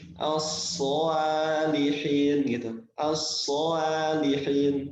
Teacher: huruf alif ini dibacanya menjadi tebal enggak bisa alifnya ini menjadi tipis jadi asihin gitu asihin tidak tidak tipis tapi mengikuti huruf tebalnya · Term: Alif yang dibaca tebal